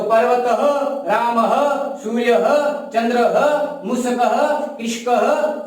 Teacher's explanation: और अंत में जो दो बिंदु लगाया गया है ये विसर्ग है। उनका उच्चारण ह की तरह किया जाता है और विसर्ग का उच्चारण स्थान कंठ है